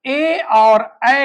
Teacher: ए और ऐ का उच्चारण कंठ और तालु से होता है। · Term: कंठ तालु